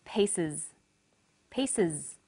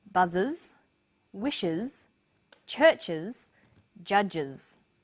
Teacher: the S on the end is pronounced Z because it followed an S sound